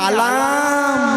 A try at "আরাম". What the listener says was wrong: আলাম নয়, বলো আরাম।